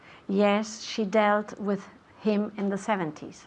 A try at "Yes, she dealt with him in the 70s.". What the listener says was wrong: Perfect, yes, she dealt with him in the 70s.